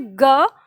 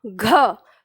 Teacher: ग की तुलना में घ में ज्यादा हवा लगती है